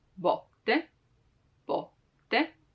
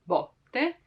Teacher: Now, as I said it right now, like botte, with an open sound, botte, botte. Like there's a lot of space in between my lingua, the tongue, and the rest of the mouth